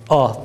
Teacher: Metsiz fethalı kalın harflerde uzatmadan, kesinlikle uzatmadan A sesi çıkararak okuyoruz. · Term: Kalın A sesi